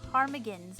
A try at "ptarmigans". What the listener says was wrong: There's a silent P.